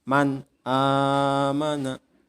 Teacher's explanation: Jadi nun matinya atau nun sukunya harus dibaca jelas. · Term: idhar